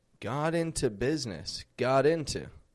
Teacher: those words, got and into, they're together. They sound like all one word